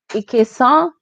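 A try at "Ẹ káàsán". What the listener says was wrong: It's close, but you're gonna say it's E. pronounce it as E. Ekason.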